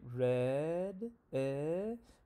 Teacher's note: when I say red, eh, my tongue is in the mid low and in the front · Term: front lower vowel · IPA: /ɛ/